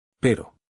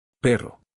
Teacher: The first word uses a tap. The second uses a trill.